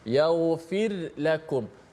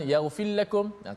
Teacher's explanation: Jadi bunyinya kalau kita tak hati-hati, dia bunyi seolah-olah macam ra tu dimasukkan ke dalam lam. Bacaan imam kita di sini kita baca secara izhar, ra tu dijelaskan bunyi mati. Sebab tu di atas ra tu ada tanda mati pula. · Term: ra mati